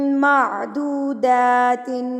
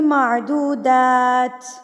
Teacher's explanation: معدودات. ٹھیک ہے, دا کے اوپر کھڑی زبر, اس کو آپ 2 حرکات کے برابر کھینچ کے پڑھیں گے